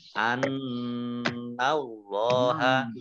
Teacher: Allahnya dibaca tebal karena harokat di depannya fathah. Lam fathah berdiri. · Idhar syafawi dibaca jelas. An Allaha nun tasdid dibaca gunnah atau mendengung. Ditahan 2 harokat. An Allaha. Allahnya dibaca tebal karena harokat di depannya fathah.